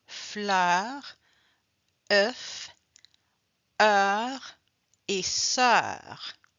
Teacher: Alors, le son E, il se caractérise par une bouche légèrement plus ouverte que le e fermé comme dans feu. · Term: Le son E plus ouvert